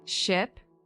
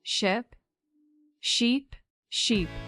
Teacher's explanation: Ship is a boat, short I, like a quick I. Sheep is the animal. The vowel is stretched out.